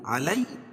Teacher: کتب علیکم اذا حضر احدکم الموت، کتب علیکم، علی یعلین ہے، یا ساکن سے پہلے زبر ہے لام کے اوپر تو یعلین ہوگا، اس کو نرم آواز کے ساتھ جلدی ادا کریں گے